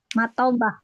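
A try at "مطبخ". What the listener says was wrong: Jadi seperti ta ya bukan th matbah.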